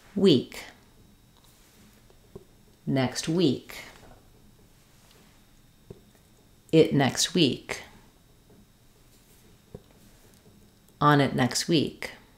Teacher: it next week notice how on it became on it because it's linked together it's going quickly